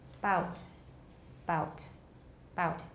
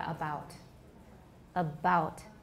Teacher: You should have voicing even before the stop is released. So bout. The voicing starts at the vowel about. · We have voicing only at the beginning of the vowel. 直到那个 vowel 那个点开始才有 voicing.